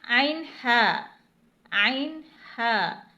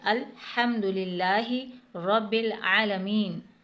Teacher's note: یہ وسطی حلق یعنی درمیانی حلق سے ادا ہوتے ہیں۔ آپ نے دیکھا ہوگا کہ جب ہم سورہ فاتحہ میں الحمدللہ رب العالمین پڑھتے ہیں تو اس میں ہا اور عین دونوں موجود ہیں، الحمدللہ رب العالمین۔